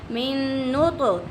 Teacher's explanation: ता कलकला है, ओके, इसलिए हमारी आवाज़ मखरी से लौट कर आ रही है।